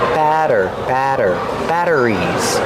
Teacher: We see the double T making a fast D sound.